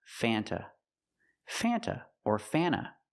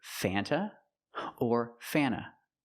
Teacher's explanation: Sometimes you don't hear the T because you have N T between vowels. So, you'll hear Fanta or Fanna, but never Fanta.